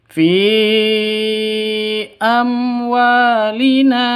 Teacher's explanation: Fi amwalina wa panjang 2 ketukan karena ada alif diawali dengan fathah. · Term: mad asli